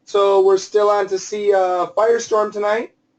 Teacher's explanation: Many times I've heard instead of an M, more like an N, Firestone, or even an NG. So I do want you to keep that M.